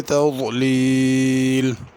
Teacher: تضلیل میں ضاد کو صحیح ادا کرنا، تذلیل زوئے یا زال وغیرہ نہیں پڑھنی